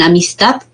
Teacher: En la palabra amistad ya está segmentado en 3 sílabas, ¿no? Y la que se pronuncia, pues, con mayor fuerza de voz, aquí lo que les indica, es la última sílaba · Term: sílaba tónica